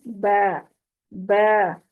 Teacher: बा होंठों के अंदरूनी हिस्से को आपस में मिलाकर जुदा करते हैं। ब, ब स्माइल वाले अंदाज में लेकर जाएंगे।